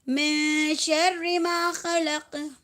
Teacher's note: یہاں پر اخفا حقیقی ادا کرنا ہے، نون کی آواز کو ناک میں اخفا کرنا ہے